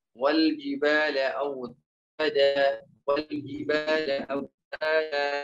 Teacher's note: mad iwad yaitu menggugurkan satu harokat di akhir kalimat. Menggugurkan satu harokat di akhir kalimat.